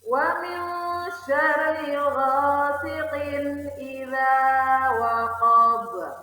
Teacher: Namun karena dia waqaf, maka ba itu dimatikan atau disukunkan dengan pantulan besar.